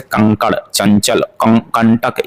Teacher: अनुस्वार इनके उच्चारण में नाक से अधिक हवा सांस निकलती है। मुंह से बहुत कम निकलता है।